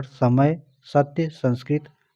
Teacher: स जो है दंत है। जीभ दांत से स्पर्श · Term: दंत्य